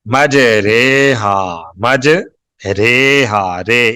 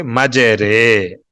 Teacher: ہدایت نمبر 3, لفظ مج ریحا لکھا ہوا ہے, اس کا تلفظ مج ریحا, را کھڑی زیر ری تلفظ ہے, لکھنے میں بھی ری ہے, لیکن اس کا تلفظ ری نہیں کریں گے, اس کا تلفظ کریں گے مج ریحا, مج ریحا, رے. اس کا جو را کی کھڑی زیر ہے اس کو مجہول پڑھیں گے, معروف نہیں پڑھیں گے